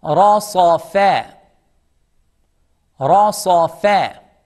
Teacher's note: ra is heavy, sad is heavy, and fa is smiley, soft.